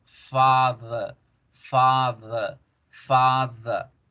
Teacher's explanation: Fíjense en la delta, la D dental, ¿cierto? Father, mire, alargo la vocal A, father, father, father.